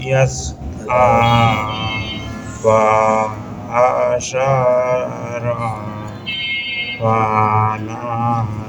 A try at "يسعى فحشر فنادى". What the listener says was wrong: একটু একটু টান পরে, কিন্তু যেটা টান নাই, হ্যাঁ ওই একটু ভেঙে ভেঙে পড়েন, আগের মতো ভেঙে ভেঙে পড়েন একটু। তো আপনি ওই আর একটু ভেঙে ভেঙে পড়লে আর একটু সুন্দর হবে।